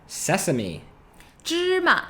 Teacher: that's pronounced first tone neutral tone